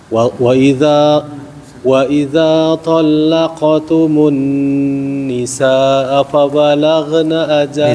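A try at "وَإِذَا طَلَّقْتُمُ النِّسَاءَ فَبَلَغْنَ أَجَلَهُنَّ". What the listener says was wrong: Bisa dipanjangin. Wa idza talaqtumun nisaa fa balaghna, seterusnya. Sinnya dipanjangin.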